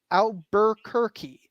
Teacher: that R is gone it disappeared in the early 19th century